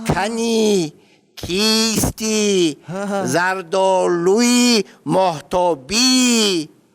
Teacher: и дароз фақат дар охири калимаҳо меояд ва бо шиддат талаффуз мешавад.